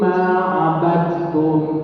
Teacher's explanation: Jadi dalnya nggak usah qalqalah. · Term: idgham mutaqaribain